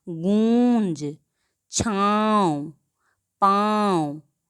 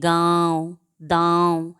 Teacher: नाक और गले से दोनों से होता है। जैसे गूंज, छाँव, पाँव आदि। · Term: अनुनासिक